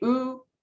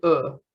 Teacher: ooh is a little bit higher so we're thinking about like your tongue placement so whether it's a little bit more closer to the roof of the mouth or a little bit dropped from there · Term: vowel height